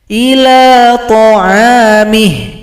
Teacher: Tapi kalau berhenti, maka ketentuan dalam ilmu tajwid hal dhamir ini disukunkan.